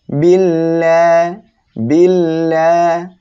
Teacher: এখানে এক আলিফ টেনে পড়বো আর এটা হলো আল্লাহ শব্দের লাম যখন আল্লাহ শব্দের লাম এর ডাইনে এভাবে জের আসবে তখন আল্লাহ শব্দের লাম চিকুন করিয়া পড়তে হবে